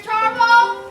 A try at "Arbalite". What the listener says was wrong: That's Arbalite. It's French. The T is silent and the E isn't.